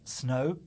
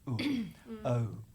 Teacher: I pronounce that O sound really as uh-oo, which is really two sounds run together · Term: diphthongs